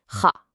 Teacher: This is a guttural sound way in the back of your throat. It's kind of like the sound you make when you're lightly clearing your throat.